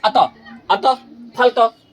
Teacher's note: विसर्ग में समझिए, विसर्ग का उच्चारण करते समय, विसर्ग का उच्चारण करते समय ह की, है ना, ह की ध्वनि निकलती है।